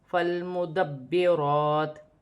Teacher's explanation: را پر کھڑی زبر ہے، ایک الف مقدار کھینچ کر بھی پڑھا جائے گا اور موٹی بھی پڑھی جائے گی · وقف کی صورت میں زیر گر جائے گی اور تا ساکن ہو جائے گی